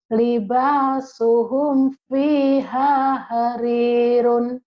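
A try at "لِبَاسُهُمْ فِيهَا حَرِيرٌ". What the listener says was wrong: Si ibu ini antara H gede sama H kecil sama aja, padahal beda. Hanya kecil harirun.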